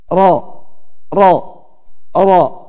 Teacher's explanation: Pada ro suara belok dari kanan dan kiri lidah ke tengah ya. Ro ya. Suara al-inhiraf.